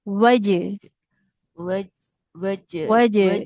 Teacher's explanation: tengah lidahnya menekan ke langit-langit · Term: huruf jimnya